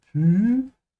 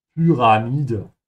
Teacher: make sure to pronounce the Y like a soft U with umlaut. So Py and not P, yeah, or Pi.